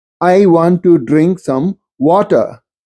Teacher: you will hear the post vocalic R not pronounced, just like in British pronunciation